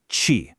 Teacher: the deep, retroflex, back-of-the-mouth sound